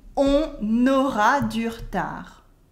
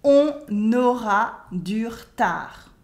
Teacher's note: We don't say on aura, we say on aura. There's a liaison between the N of on and the A of aura.